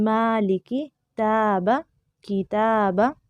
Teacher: کیونکہ میم باریک ہے تو الف بھی باریک پڑھا جا رہا ہے